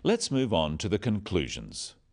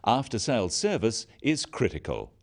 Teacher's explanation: note that downward intonation at the end of sentences